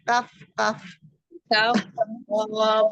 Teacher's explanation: Pangkal lidah bertemu dengan langit-langit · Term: Huruf kaf